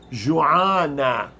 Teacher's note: So some Arabs, to make the feminine cases for adjectives, instead of I, they pronounce it with an A.